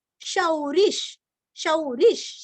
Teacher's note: शा के ऊपर दो मात्रा का उच्चारण अच्छे से करना है, विसर्ग का आधा श और री रस्व लेना है